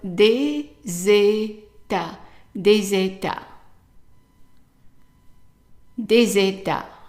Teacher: the S is going to be pronounced like a Z, Z as in zebra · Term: liaison